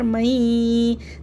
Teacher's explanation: हमने नून को या से मिलाया भी है, और गुन्ना भी क्या है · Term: इदगाम मअल गुन्ना